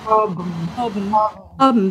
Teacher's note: even though it's H-O-B-N, that B-N comes out m. Hobn. Let's just try that.